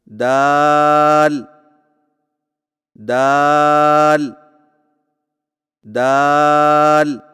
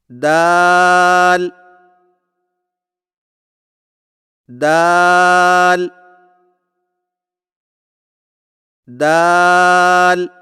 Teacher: دال کی ادائیگی میں زبان کی نوک کو سامنے والے اوپر کے 2 دانتوں کی جڑ سے لگا کر باریک آواز میں پڑھیں